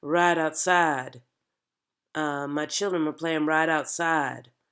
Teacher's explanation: we're not using a large range of notes in this accent we're staying in like a three note range